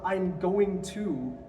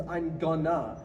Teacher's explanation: You elide the G and the T at the end, they sort of combine.